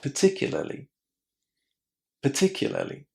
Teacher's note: British speakers don't pronounce the letter R inside. So we say particularly.